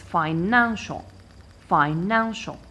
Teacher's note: I stress the second syllable counting from the end which is this one and it is financial financial now the